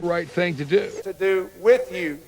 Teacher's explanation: that goose vowel that is fronted